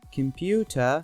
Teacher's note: /j/ after /p, t, k/ becomes voiceless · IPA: /kəmˈpjuːtə/